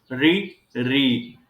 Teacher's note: सक्रिय अंग हमारा है मूर्धा, तो री और री का उच्चारण स्थान मूर्धा होता है